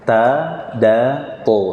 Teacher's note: satu makhraj, satu tempat keluar. Ujung lidah bertemu dengan pangkal gigi seri atas. Kalau ini ujungnya, kalau di atasnya pangkalnya dekat dengan gusi.